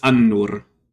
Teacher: instead of actually having the L quality, it just geminates the first consonant in the word. And so you have a short, and then you geminate the first consonant if it's a fronted consonant, and then you have the rest of the word. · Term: geminate the N